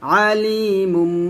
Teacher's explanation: আলিমুম বিদাতি দাল ওয়া পেশ দুজ আলিমুম বিদাতি আলিমু গন্না করবেন আলিমুম গুন্নাটা অবশ্যই একটু বেশি পরিমাণ টেনে গুণনা করবেন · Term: ক্লাব গুন্না